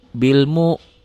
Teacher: Wawnya nggak dibaca. Ini hamzahnya aja. Hamzah itu seperti ada koma di atas.